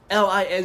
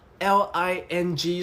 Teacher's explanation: Okay, 'lin' is a alveolar nasal 'ling' is a velar nasal